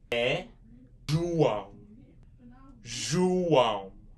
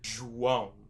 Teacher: What that accent does in Brazilian Portuguese makes more like a nasal sound. It makes more like a wow.